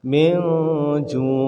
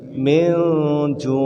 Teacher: Dia membaca disamarkan, maksudnya nunnya itu seperti tak sampai. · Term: Ikhfa